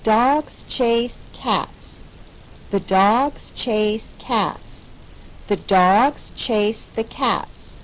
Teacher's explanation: that's because each sentence has three stress syllables dogs chase and cats · We keep adding syllables each time we say the sentence, but each sentence takes just about the same amount of time to say as the shorter one before it. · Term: 3 stressed syllables